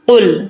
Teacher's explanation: قاف کو موٹا پڑھنا ہے